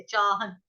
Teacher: ह के ऊपर बिंदी जो है, अनुस्वार है, उसका उच्चारण होगा हलंत न से